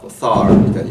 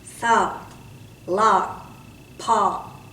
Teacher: Oh, you just added an R at the end